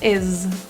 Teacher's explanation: is actually pronounced with a voiced Z sound rather than an S as it's spelled. So instead of is, add voicing or vibration is.